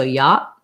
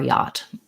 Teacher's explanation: you'll often hear Americans will use a stop T at the ends of words. So yacht, they might say, or yacht with a released T.